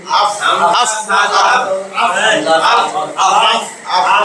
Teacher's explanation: নিচের ঠোঁটের পেট উপরের সামনের দুই দাঁতের আগার সঙ্গে লাগাইয়া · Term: 14 নম্বর মাখরাজ